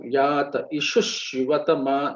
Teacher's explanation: In many places, visargam will disappear and it will get merged with subsequent word with the letters.